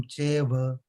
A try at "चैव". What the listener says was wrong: चैव ऐ का उच्चारण एकदम स्पष्ट करेंगे। चैव